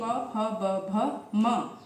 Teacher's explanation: ओष्ठ कहे गए हैं यानी कि होंठ, क्योंकि इनका उच्चारण होंठों के मिलने पर ही होता है।